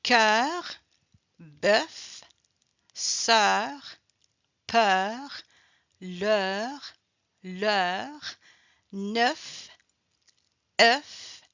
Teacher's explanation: Donc quand on prononce la dernière consonne, automatiquement le son e est plus ouvert.